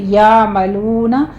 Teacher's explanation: आइन की आवाज़ वस्ते हलक में जाके स्टॉप कर देनी है